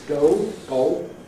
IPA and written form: gɒo (goal)